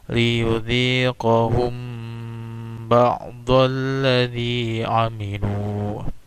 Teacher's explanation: Sekali lagi, ini memiliki hukum tajwid ikhfa syafawi. Ya, mim sukun bertemu dengan huruf ba. Bacanya agak ditahan sedikit.